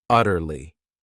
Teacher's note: word has 3 syllables, and the stress is on that first syllable,